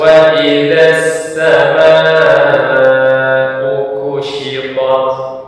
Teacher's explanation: Sama dibaca kadarnya 4 sampai 5 harokat, tempat wajib muttasil. Nah, jadi harus dibaca lebih panjang dari 2 harokat.